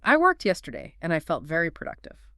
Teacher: Notice how your voice naturally goes down at the end. It sounds calm and confident.